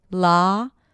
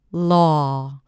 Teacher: In the second one, I rounded the lips just a bit, but my mouth was very open for both. The tongue is relaxed and pulled back just a bit. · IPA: /lɑː/ - /lɔː/